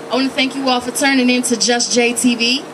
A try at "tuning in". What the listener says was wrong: Turning in. Tuning. You said turning.